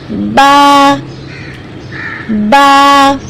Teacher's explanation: با کو ادا کرنے کے لیے ہمارے دونوں ہونٹوں کو ہمیں ملانا ہوتا ہے۔ جس طرح ہم خاموش ہوتے ہیں تو ہمارے دونوں ہونٹ آپس میں ملے ہوئے ہوتے ہیں، بس انہی ہونٹوں کو ہمیں جدا کرنا ہے اور آواز کو منہ سے باہر نکالنا ہے، بالکل باریک آواز میں، با با۔